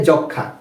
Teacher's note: কেন যক্ষা হচ্ছে ম এর উচ্চারণ হচ্ছে না কারণটা হচ্ছে যে এটা হচ্ছে একটি যুক্তবর্ণ বা যুক্ত ব্যঞ্জন বর্ণ এবং এর সাথে ম ফলা রয়েছে এজন্য ম এর কোন উচ্চারণ হচ্ছে না